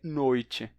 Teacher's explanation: Nesse caso, a vogal dos dois lados vai causar o chiado do T.